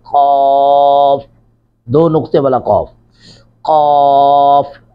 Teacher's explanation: ان کی ادائیگی کے وقت زبان کا پچھلا حصہ تالو کے نرم حصہ سے مس ہوتا ہے، یعنی یہ جو تالو کا نرم حصہ ہے تو یہ زبان کا پچھلا حصہ تالو کے ساتھ جب نرم حصے کے ساتھ مس ہوگا تو یہ قاف نکلے گا۔